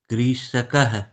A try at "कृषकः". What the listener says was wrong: ह्रस्व दीर्घ है? दीर्घ क्यों कर रहे हैं? कृषकः।